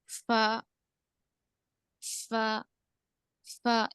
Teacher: दोनों दांत नीचे के होठ को लगेंगे सामने वाले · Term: होठों से अदा होने वाला